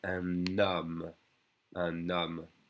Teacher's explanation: So the un, usually you don't hear the N, but if it's followed by a vowel sound, and the H is silent, it's followed by a vowel sound, we connect the N to the O